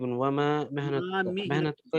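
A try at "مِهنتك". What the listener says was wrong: جی محنت کا میم کے نیچے کسرہ ہے. محنت کا.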